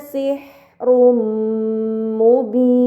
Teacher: dhammah tain tersebut harus dibaca secara melebur dengan gunnah yang dipanjangkan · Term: idgham bi gunnah